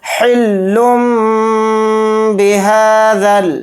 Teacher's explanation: ہا کے اوپر کھڑا زبر ہے، ہا کو تھوڑا کھینچ کر پڑھیں گے، ایک الف کی مقدار